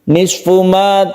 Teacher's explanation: dengan izhar syafawi izhar artinya jelas syafawi artinya bibir kita hendaknya membaca mim mati bertemu dengan Nun ini dengan jelas dan tidak berdengung · taraka roknya agak ditebalkan karena rok yang berfathah itu membacanya tafkhim atau ditebalkan.